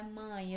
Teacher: na palavra mãe eu tenho primeiro a vogal a depois a semivogal e